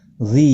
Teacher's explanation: ذی یا مدہ ہے، 1 الف کے برابر کھینچ کر پڑھیں گے